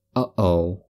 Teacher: voiceless glottal stop like the catch in the throat in uhoh